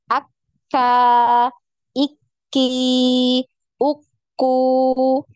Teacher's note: ketiga ka ki polah keempat di tasdid sama dengan huruf q tertahan dulu suaranya ya jadi seperti terputus ketika ditasdid